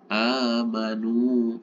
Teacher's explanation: baik dibaca waqaf maupun dibaca wasol untuk kasus amanu ini sama, yaitu dibaca panjang 2 harokat.